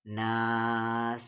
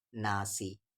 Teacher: آیت ہے اس لیے سین کا زیر جزم بن جا رہا ہے